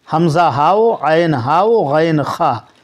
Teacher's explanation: یہ حلق سے ادا ہوں گے یہ حروف، آپ اس کو حلق ہی سے ادا کریں گے۔ حروف حلقی 6 ہیں، حمزہ ہاؤ، عین ہاؤ، غین خا، یہ حروف حلقی ہیں، اس کو حلق سے ہی ادا کرنا ہے۔